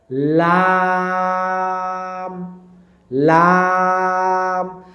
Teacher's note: এই যে আমাদের জিহুবা এই আগাটা লাগবে সামনের যে দুই দাঁত দাঁতের যে মাি ওই মাড়িতে অটোমেটিক আপনি লাম বলতে যাবেন। আপনার জিহবাটা কিন্তু সামনের উপরের দাঁতের মাড়িতে লাগবে।